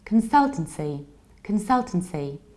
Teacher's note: consultancy, reduced beginning, stress second syllable, reduced ending